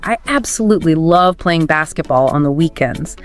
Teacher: that upward lift on weekends shows your passion